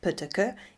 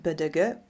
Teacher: Intervocalic voicing is a process whereby a voiceless segment, such as pötöke, is realized as partially or totally voiced bödöge when occurring between two vowels